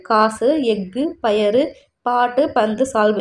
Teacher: இது எல்லாமே பார்த்தோம்னா நார்மலாக வர ஒரு மாத்திரையிலேருந்து குறைஞ்சி அரை மாத்திரை தான் வரும். ஏன்னா இறுதியில் வரதுனால. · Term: குற்றியல் உகரம்